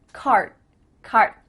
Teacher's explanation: My tongue is flat against the roof of my mouth to make the D, but it's not coming out.